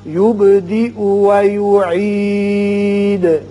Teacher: با ساکن ہے، اس کی صفت قلقلہ ادا کریں گے